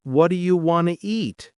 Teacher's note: The words blend and lose sounds. Do you becomes dia. Want to becomes wanna. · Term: connected speech